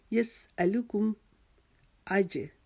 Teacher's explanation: جیم کے اوپر قلقلہ کریں گے کیونکہ جیم کے اوپر جزم آ گئی ہے · ملا یسألکم, سین کو باریک پڑھیں گے. لام کاف میم کو بھی باریک پڑھیں گے